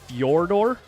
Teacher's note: Fior with like a rolled r on both sides but it it's not exactly like that I tried pronouncing it